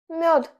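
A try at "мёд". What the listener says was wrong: The second letter is yo, so we have to make it sound softer. Your tongue is closer to the front teeth.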